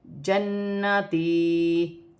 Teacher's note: یہاں پہ نون مشدد میں غنہ بھی کیا جائے گا اور ایک الف میں مقدار کھینچ کر بھی پڑھا جائے گا